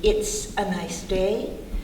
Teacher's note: T doesn't vibrate s doesn't vibrate we're going to keep that s going as air again the